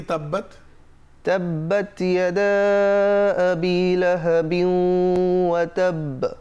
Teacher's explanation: এখানে তায়ের মধ্যে একটু হামস, একটু বাতাস দিতে হবে